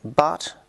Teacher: We have as in but, which is low, back and unrounded.